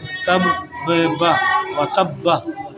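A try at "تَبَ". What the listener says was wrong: बे नहीं बा ज़बर बा बा ज़बर बा बा आखिर में बा है ना। व तब बा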